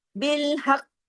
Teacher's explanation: हमने यहां पर अर्जी सुकून किया तो हमने काफ की हरकत को रोक दिया। यही अर्जी सुकून का तरीका है कि लास्ट लेटर को पढ़ते हैं लेकिन लास्ट लेटर की हरकत को नहीं पढ़ते।